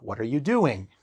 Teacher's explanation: That intonation goes down at the end of sentences. It goes down at the end of questions, like open questions,